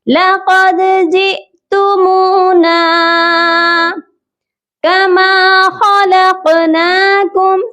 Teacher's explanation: قاف جو ہے حروف قلقلہ ہے اور ساکن ہو رہا ہے، اسی لیے ہم یہاں پر قلقلہ کریں گے